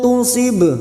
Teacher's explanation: ba sukun qalqalah sugro yang mati asli di tengah kalimat jangan lupa dipantulkan